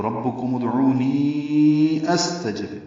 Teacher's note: ربکم ادعونی، عو واو مدہ ہے، دو حرکات لمبا کریں گے. نی یائے مدہ ہے اور اگلے کلمے میں حمزہ آ رہا ہے، اس لیے مد منفصل ہے. تو ربکم ادعونی استجب، نی کو 4 حرکات لمبا کیا.